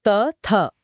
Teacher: उदाहरण के लिए त और थ बोलते समय जीभ दांतों को छूती है। हां त थ दांत टच हो रहे हैं। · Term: दंत्य ध्वनियां